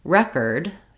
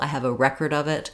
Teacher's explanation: a word like record is stressed on the first syllable